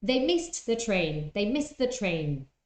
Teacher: Here, missed, two consonants, st, and the, another one. So the t in miss, missed, is the one that disappears.